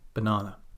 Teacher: Syllable stress is the first na in banana. It's the second syllable.